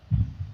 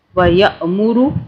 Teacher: جب الف کے اوپر حمزہ آتا ہے تو اسے ہم جھٹکے سے پڑھتے ہیں